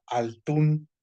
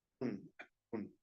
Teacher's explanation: como se fue la consonante, alguien la tiene que sustituir, la misma inicial, por eso dice atún, doble ta